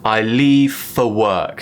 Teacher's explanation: so we've got the schwa on the word for once again